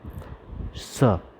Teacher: इसमें जीवा का अग्रभाग आपके दांतों को स्पर्श करेगा और यही इसका ध्वनि होगा, स।